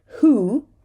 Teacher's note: Here we have a WH, but we're saying the H and we're dropping the W.